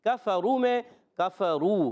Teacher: کفرو کاف پر زبر ہے، کاف کا مخرج بتا دیتا ہوں، کاف زبان کی جڑ اور تعلق کے سخت حصے سے ادا ہوتا ہے